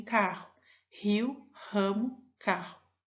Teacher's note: Em rio e ramo, há o emprego da vibrante múltipla